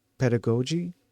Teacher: The stress is always on the first syllable, PEH. 2. The middle, the da, is a very quick neutral sound, the schwa slash a, almost like d.